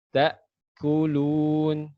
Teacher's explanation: ciri-cirinya hamzah ketika sukun, maka ini tertutup. Makanya tidak ada lagi suara keluar. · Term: hamzah sakinah